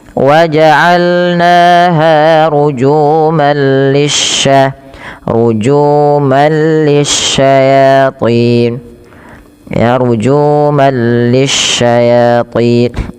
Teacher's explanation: langsung masukkan tanwinnya ke huruf lam yang bertasydid, tapi tidak disertai dengan penahanan karena dia bila gunnah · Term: idgham bila gunnah